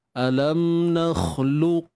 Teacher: Dia akan kita kata sifat ta'khir dia adalah sifat syiddah. Okay, sifat ta'khir yang kita akan dengar pada qaf ni adalah sifat syiddah dia, iaitu tertahannya suara.